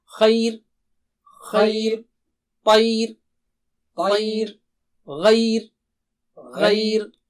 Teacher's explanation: تو را ان تینوں صورتوں میں باریک ہوگا آسانی کے لیے